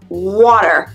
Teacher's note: Pour l'accent américain, water. Le T, ça devient un D.